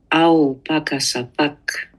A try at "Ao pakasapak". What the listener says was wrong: Un petit peu plus expiré serait super.